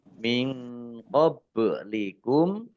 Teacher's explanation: nun sukun bertemu dengan huruf qaf, bacaan ikhfa dibaca samar-samar